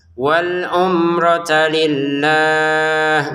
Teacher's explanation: Wal umrata di sini mim sukun ya. Jangan dibaca dengan dengung tapi ini dibaca dengan jelas.